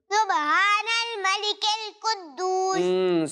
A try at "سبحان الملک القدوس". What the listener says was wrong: سبحان الملک القدوس. تھوڑی سی ہا کی ادائیگی صحیح کرنی ہے, لیکن اعراب صحیح سنائے ہیں.